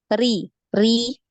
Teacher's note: Ri Ri ya biasa ya Rini r Rika riiri gitu ya jadi biasa aja enggak dinaikkan pangkal lidah